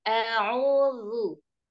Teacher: Di huruf Zu terlalu tebal, ditipisin.